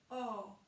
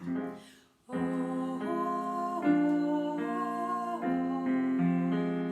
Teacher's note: quand on fait ce O, on a presque la bouche ouverte comme un A plutôt qu'un O. Il faut vraiment l'ouvrir le plus possible. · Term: un O ouvert